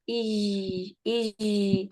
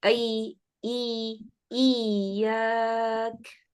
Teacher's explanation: तो ये इस वजह से होता है कि ज़बान या के मखरज से ज़्यादा ऊपर चली जाती है, जीम या शीन के मखरज के करीब हो जाती है, जिसकी वजह से इज की आवाज़ आना शुरू हो जाती है।